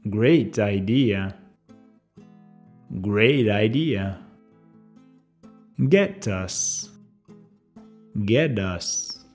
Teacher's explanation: cuando la próxima palabra comienza con un sonido vocal, el T puede cambiar a D.